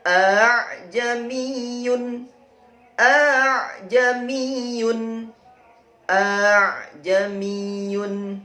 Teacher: Ditulis sebagai aa dan dibaca sebagai aa. Jadi hamzah kedua dilunakkan menjadi aa; Awalnya aa aa menjadi a. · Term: tashil